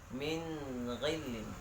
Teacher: Jadi bacanya harus jelas dan terang, tidak boleh didengungkan.